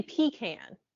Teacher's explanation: See, I would say pecan. I would put the emphasis on the second syllable.